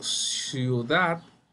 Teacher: la sílaba tónica la mayor fuerza se encuentra en el último lugar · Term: aguda